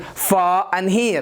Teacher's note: in standard British English, the letter R is silent